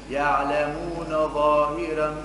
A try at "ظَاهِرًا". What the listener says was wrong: ظاهرا. فخم الراء. كيف نقول ظاهرا؟ هذا ورش. قالوني فخم. يعلمون ظاهرا.